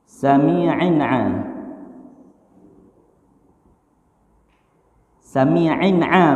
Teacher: Sami'in a sama kasratain berjumpa sama huruf a, tidak boleh dengung.